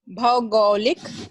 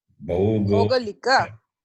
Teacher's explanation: Not like Maunvati. You cannot cut the last vowel.